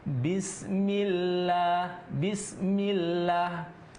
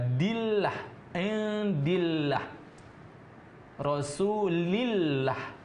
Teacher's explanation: Maka ketika huruf berbaris bawah kemudian masuk ke huruf Allah, kalimat Allah, maka dibaca tipis.